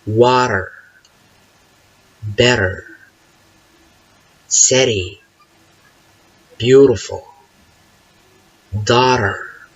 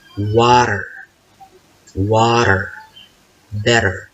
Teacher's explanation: Okay, the mechanism for this sound will be like that. Okay, the front part of the tongue will pounce against the roof of the mouth, goes up and down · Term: flap T